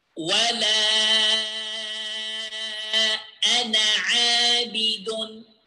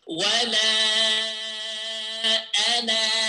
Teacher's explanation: we will skip the alif here, okay? We will not pronounce the alif